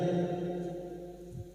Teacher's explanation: Huruf kaf masuk pada huruf lam tanpa ditahan lama-lama ya, jangan dibaca likul ya, jangan ditahan, hanya masuk tanpa ditahan, tanpa mendengung.